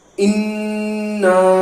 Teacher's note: یہاں پر نون پر تشدید ہے تو غنہ ہوگا, غنہ کے ساتھ کھینچیں گے